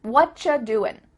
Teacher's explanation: you just becomes cha